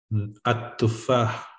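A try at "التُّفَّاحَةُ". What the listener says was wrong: At-tufaha, but don't forget that ta as well.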